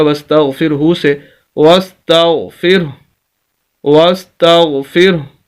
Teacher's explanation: جیسے ہی ہم اس ہا کو ساکن کریں گے تو اس کی پیش ختم ہو جائے گی۔